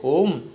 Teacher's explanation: वे स्वर जिनके उच्चारण में ह्रस्व तथा दीर्घ स्वर से अधिक समय लगता है उन्हें प्लुत स्वर कहते हैं